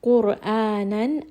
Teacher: Qaf is heavy, Ra in this case is heavy. قرآنا, A is going to be a 2-count mad.